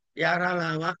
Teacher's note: యారాలావా అన్నప్పుడు తగులుతోంది, కానీ కాకాగాఘానాలు తగిలినంత స్పష్టంగా తగలట్లే, కొంచెం తగులుతోంది. తగిలితే స్పష్టమన్నాం, కొంచెం తగిలితే ఈషత్ స్పష్టం అన్నాం.